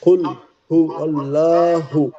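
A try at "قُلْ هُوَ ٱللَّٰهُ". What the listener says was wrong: জি, আপনার এইটা হচ্ছে না, মোটা লাম শব্দটা মোটা করে বলতে হবে আরো একটু। লামটা আরো মোটা করে পড়তে হবে।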